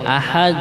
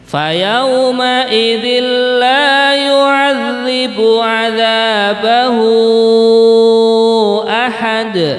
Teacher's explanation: Di sini ada contoh bacaan qalqalah ya, ahad gitu. Ketika waqaf dibaca qalqalah atau memantul dalnya itu.